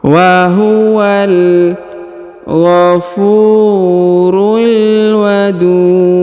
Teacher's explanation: Ghafurul wadud, huruf du dipanjangkan boleh 2, boleh 4, boleh 6 harokat karena di depan huruf du terdapat waw sukun atau waw mati sebelum huruf pemberhentian, dan huruf pemberhentian huruf du disukunkan atau dimatikan sehingga dibaca pantul atau qalqalah